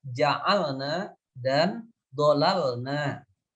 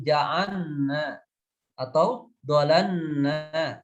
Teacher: sehingga lamnya yang sukun itu dibaca tidak izhar, tidak jelas, bahkan cenderung dibaca idgham, dan itu adalah sebuah kesalahan. Sebetulnya yang betul adalah bayan atau izhar, dijelaskan saja bunyi lam yang sukun itu dan tidak perlu kemudian diidghamkan.